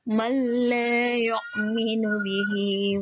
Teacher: huruf mim langsung melebur ke huruf la tanpa didengungkan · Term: idgham bila gunnah